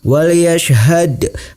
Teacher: Wal yashhad, hukum bacaannya adalah qalqalah sugra. Cara membacanya huruf dalnya sedikit dipantulkan.